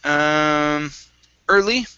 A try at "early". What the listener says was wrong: Okay, give me a good L there.